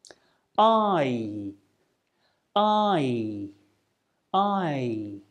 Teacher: your mouth will start on the position of the /æ/ sound and then it will close a little and your lips become more stretched out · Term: diphthong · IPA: /aɪ/